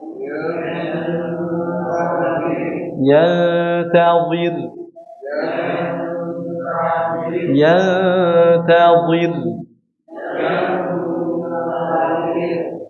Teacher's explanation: rnya dibaca tebal atau tipis? Kenapa tipis? Karena sebelumnya kasrah.